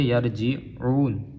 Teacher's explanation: اون نہیں کریں گے، عون عین کے ساتھ پڑھیں گے